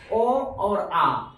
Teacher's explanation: अब हम लोग ये समझेंगे जो मौखिक स्वर है उसमें उसके उच्चारण में हवा जो है मुख से निकलती है। जैसे यहाँ एग्जाम्पल दिया है ओ और आ, यानी इसके उच्चारण करेंगे तो हवा मुख से निकलेगा।